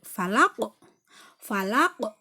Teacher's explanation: Jadi qafnya huruf qaf itu dipantulkannya itu harus kelihatan. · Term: qalqalah kubro